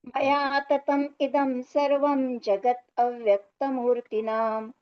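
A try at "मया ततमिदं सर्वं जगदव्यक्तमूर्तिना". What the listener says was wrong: सुंदर, अति सुंदर।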